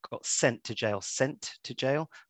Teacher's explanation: the T in my accent anyway uh disappears · So we've got, you know, "he got sent to jail." We could look at how the T, in my accent anyway, disappears, and we got sent to jail, sent to jail. There's an elision of the T there.